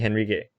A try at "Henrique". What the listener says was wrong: By the way, it's pronounced Enrique. Enrique. The H should be silent if like Spanish.